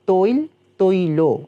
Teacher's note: এখানে যেহেতু আগে ঐকার আছে এবং একটা অ রয়েছে শেষে, লয়ের সাথেও কিন্তু একটা অ রয়েছে, তো এই অ সবশেষে গিয়ে ওকারান্ত হচ্ছে, কেননা আগে যেহেতু ঐকার রয়েছে